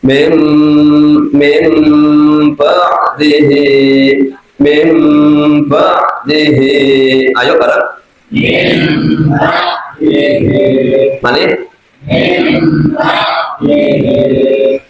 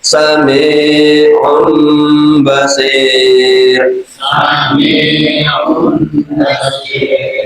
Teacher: Nah, jadi seolah-olah seperti berubah menjadi mim. Bacaannya seolah-olah tanwinnya itu berubah menjadi mim, namanya iqlab.